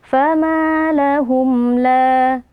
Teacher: Lahum, la, kemudian ada mim sukun yang berjumpa dengan huruf lam, hukumnya adalah izhar syafawi. Cara membacanya, mim sukunnya kita baca dengan jelas tanpa berdengung.